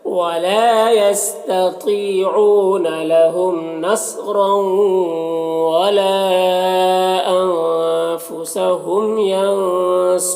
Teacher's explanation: ینصرون نون میں اخفا ہو رہا ہے، صاد حروف مستعلیہ میں سے پر پڑھیں گے، اور را کو بھی پر پڑھیں گے پیش ہے، اور وقفے کی صورت میں مد عارض وقفی ہوگا، تو اس طرح سے پڑھیں گے.